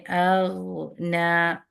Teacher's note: یہاں پہ رخاوت بھی ہے غین کے اندر اور آواز بھی ہے، تو اس لیے ہم نے اغنا، تو تھوڑا سا رخاوت میں یہ ہوتا ہے کہ تھوڑا سا ہم نے ٹائم تو دینا ہے لیٹر میں.